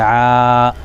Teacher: تو ولا انتم، عین پر کھڑا زبر ہے، کھڑا زبر الف مدہ کے برابر، ایک الف کھینچیں گے